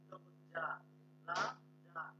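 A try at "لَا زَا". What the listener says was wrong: এটা জাল না তো, এটা ঝা ঝা। ঝা জবর ঝা, জিম জবর যা, ঝা যা।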